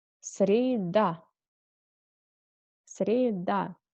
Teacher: The third day we call среда. Accent on A.